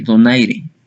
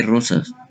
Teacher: el fonema vibrante simple de donaire y múltiple de rosas